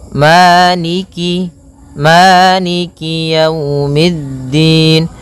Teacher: kasrahnya juga disempurnakan, jangan sampai dibaca dengan e, tapi dia i